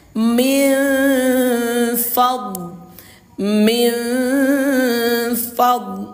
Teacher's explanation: dengan menyamarkan suara nun sukun ini kita samarkan ke huruf fa disertai dengung dua harakat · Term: ikhfa hakiki